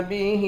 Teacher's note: ہا کے نیچے کھڑی زیر ہے، اس کو بھی ایک الف کی مقدار کھینچ کر پڑھیں گے